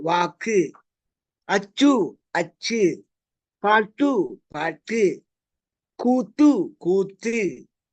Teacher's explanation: இந்த உகரங்களை நம்ம குறுக்கி கு சு டு து பு ரு அப்படின்னு சொல்லுவோம் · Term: குற்றியல் உகரம்